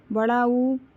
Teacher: जीभ की स्थिति पश्च है, उच्चारण स्थान ओष्ठ है, मात्रा दीर्घ है और मुख विवर समृद्ध है।